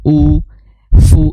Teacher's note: karena dia dhamah maka dia harus diucapkan dengan cara mecucu